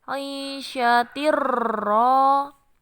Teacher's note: Karena ada tanwin kasroh bertemu dengan ro. Cara bacanya tanwinnya langsung masuk ke ro. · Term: idgham bila gunah